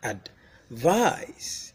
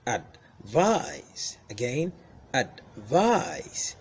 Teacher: So first syllable goes down, second syllable goes up. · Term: verb form